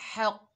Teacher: हा जो है हलक के दरमियान से अदा करेंगे, हक। और कौफ जो है ये हरूफ इस्ताला में से है, मोटा पढ़ा जाएगा, हक। कौफ के ऊपर ज़बर है, बगैर खींचे पढ़ेंगे, क़ा, हक।